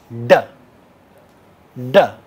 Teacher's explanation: It's a retroflex sound, right? In our language, it's a retroflex.